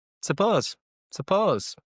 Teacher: So again the U disappears.